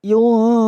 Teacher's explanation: nun sukun bertemu fa yang dinamakan dengan bacaan ikhfa. Cara membacanya adalah yunfiqun, didengung 3 ketukan · didengung 3 ketukan ya di bacaan ikhfa tersebut